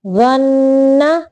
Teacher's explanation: اس کی ادائیگی زبان کی نوک کو اوپر کے سامنے کے دو جو دانت ہیں ان کے سرے سے لگا کے تھوڑی آواز کو موٹا رکھ کے ادا کرنا ہے.